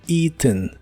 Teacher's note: se empieza pronunciando con la i larga o doble y la e del final es muy suave eaten algunos incluso la pronuncian de manera nazal al final y